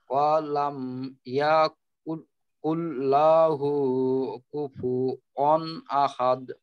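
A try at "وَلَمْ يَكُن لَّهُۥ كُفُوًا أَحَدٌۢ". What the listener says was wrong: হ্যাঁ, এইখানেও ইয়াতে একটু লম্বা হয়ে গেল, আবার লাহু, না, লাহু, ওয়ালাম ইয়াকুল লাহু কুফুয়ান আহাদ।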